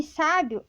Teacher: Já em sábio, a sílaba mais forte é o primeiro A, sa, para deixar mais aberto